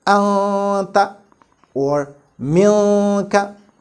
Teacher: we have to produce a complete nasalization or gunnah kamila from the nasal cavity